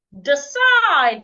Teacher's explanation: Here I am stressing the second syllable.